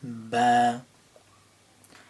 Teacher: noticing the ba at the beginning, realizing it comes from your lips, and figuring out how you say it.